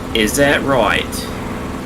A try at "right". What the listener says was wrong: You don't pronounce the T on right. Right.